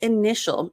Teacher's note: the T sounds like an SH.